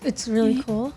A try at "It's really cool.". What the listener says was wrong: Don't answer like a question. You gotta answer like you got. It's really cool. Not it's really cool.